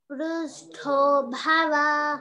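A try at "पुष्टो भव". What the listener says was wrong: Akkada pu. Akkada hru. Pushto bhava. Pushto bhava.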